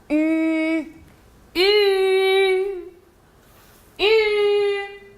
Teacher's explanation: La voix U se forme en rapprochant les dents sans les joindre entièrement et allongeant les deux lèvres en dehors, les approchant aussi l'une de l'autre mais sans les rejoindre tout à fait.